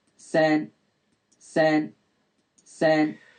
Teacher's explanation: Now if you want to find the formants, I think the first thing to do is to work out what kind of vowel you've got, and you should be hearing that this is a front kind of mid vowel